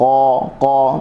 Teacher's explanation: huruf qaf, qa berada daripada di pangkal lidah. Pangkal lidah bertepatan dengan langit atas